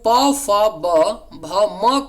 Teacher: प, फ, ब, भ, म का उच्चारण स्थान जो होता है वह आपका ओष्ठ होता है